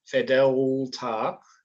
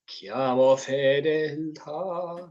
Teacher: It's a bit solid, tongue forward, and just a nice light L